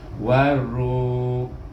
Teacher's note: Kemudian ra baris depan ni bertemu dengan waw di sini, jadi dibaca dengan mat asli iaitu panjang 2 harakah. Bunyinya sama juga ru, tapi cuma panjang 2 harakah